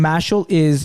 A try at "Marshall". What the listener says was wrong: There's no R. Where's the R?